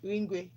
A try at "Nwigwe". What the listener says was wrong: There's no N in the middle.